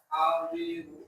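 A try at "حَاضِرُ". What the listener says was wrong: Stop, jangan tebal kan, jangan hadiru. Nah, ha. Tekan lagi ainnya.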